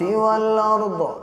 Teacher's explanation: وقف کی حالت میں زیر کو گرا دیں گے، والارضی سے والارض پڑھا جائے گا